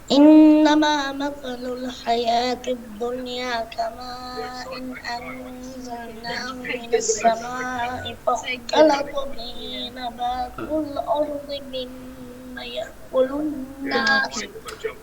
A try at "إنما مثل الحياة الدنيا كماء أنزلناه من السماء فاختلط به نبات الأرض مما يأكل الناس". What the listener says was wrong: Don't run. Don't run. Slow. Be more slow. So complete every sound, every pronunciation. Mostly you are missing mud sounds everywhere. These mud is wajib mud.